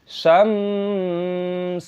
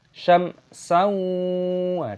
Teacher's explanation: dibaca dengan jelas, tidak boleh mengandung bunyi sengau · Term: izhar syafawi